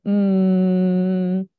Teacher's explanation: and when you make a nasal sound that opens up and the air is actually coming out of your nose which is why you can go um right with your mouth closed · usually you have your soft palate your velum is like going to be closed and when you make a nasal sound that opens up and the air is actually coming out of your nose which